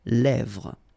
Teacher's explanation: it gives you the E, really open sound